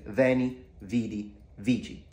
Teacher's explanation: The C is pronounced CH because it's an Italian pronunciation, so influenced by modern Italian. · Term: ecclesiastical pronunciation